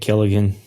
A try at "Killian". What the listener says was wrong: Also, my name is Killian. There's no G.